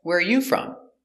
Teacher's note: when you answer back you put the stress on you